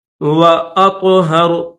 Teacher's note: را کے اوپر پیش ہے لیکن اسٹاپ کریں گے تو را کو جزم کے ساتھ پڑھیں گے